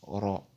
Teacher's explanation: Ra, c'est Ra'un, plus la voyelle Fatha qui donne Ra. Ici, la voyelle Fatha se lit O, parce que Ra'un est une lettre emphatique